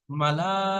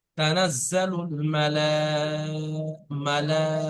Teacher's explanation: দেখেন, মালা, এর লামের উপরে মদ আছে না, এই মদের পরে হামজা জি একই শব্দ এসে, সেটা মধ্যে মুত্তাসিল বলা হয়। মধ্যে মুত্তাসিলকে জি জি 4 থেকে 5 আলিফ পরিমাণ টান দিতে হবে। তানাজ্জালুল মালা, মালা, এই টানটা আপনার ছেড়ে যাচ্ছে।